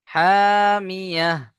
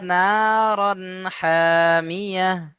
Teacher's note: আয়াতের শেষে গোলতা, তাই হা সাকিন করে পড়তে হবে। ইয়া হা জাবার ইয়াহ, হামিয়া, তাসলা নারান হামিয়া।